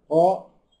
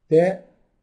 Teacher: طا ده مفخم تاء مرقق